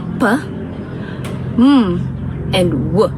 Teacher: they are all baval sounds because the both my upper and lower lips are touching each other momentarily to produce the sound